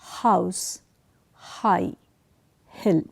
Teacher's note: House High Hill pay attention House High Hill you notice that this sound is created when there is restriction of air way back towards the region of the throat · at the eighth and the last one this is the glottal the sound is uttered in the region of the throat